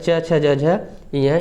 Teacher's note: तो तालव्य का मतलब होता है च छ ज झ य, इनका उच्चारण जो होता है तालव्य से होता है